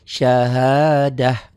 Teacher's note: Nah ini yang saya katakan khusus spesial tak begini, tak marbutoh dihentikan jadi syahadah. Enggak syahadat ya, enggak ada T. T-nya berubah menjadi H.